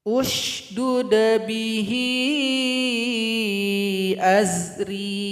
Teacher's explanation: Kalau huruf yang ketiga, kebetulan di sini huruf dal, maka hamzah wasal bunyinya u. Jadi karena ini dhamma, maka di sini u.